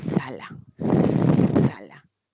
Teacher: El ápice de mi lengua se aproxima a los alvéolos. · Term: consonante alveolar